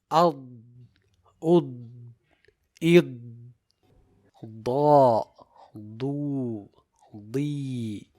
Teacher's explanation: As for the letter Dad, it has jahr, rakhawa and istitala.